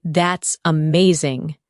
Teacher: When you say, That's amazing, your tone rises with excitement. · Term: rising tone